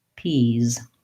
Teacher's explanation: Because the sound is voiced in peas, I hold this vowel longer. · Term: long vowel